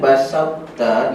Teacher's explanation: ta dengan ta makhraj dia sama hujung lidah belakang gigi atas